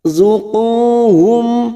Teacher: mim sukun bertemu fa idhar safawi, kita baca jelas.